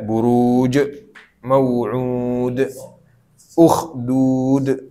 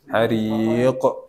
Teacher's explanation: banyak qalqalah ya di akhir-akhirnya ya